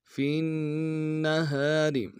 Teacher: ساتھ ملانا ہے، نون کے اوپر تشدید زور دیں گے، اور ہا کے ساتھ الف مدہ ہے، ایک مقدار میں کھینچیں گے، را کو باریک ادا کریں گے